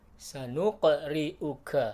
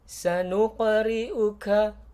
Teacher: jangan lupa itu huruf Qalqalah sehingga dipantulkan suaranya